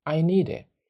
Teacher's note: so the D connects to the I and T